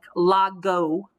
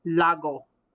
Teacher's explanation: g almost as if i'm swallowing it the back of my tongue when i say that g is hitting the back of my palate it shuts down the sound of the g so instead of it being a sharp g like la go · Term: throttle g